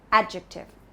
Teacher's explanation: The stress is on the first part, adjective.